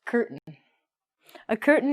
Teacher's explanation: we are not going to say the t if it is with an n and between some vowels and we're going to actually take out some vowel sounds so